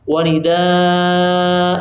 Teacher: Wa nidaa panjang juga dua harakat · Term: mad iwad